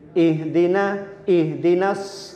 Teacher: ih niku tenggorokan paling bawah mendekati dada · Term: hak